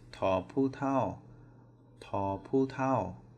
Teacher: ta, falling tone, pu, falling tone